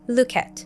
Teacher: the K from look links to the A sound from at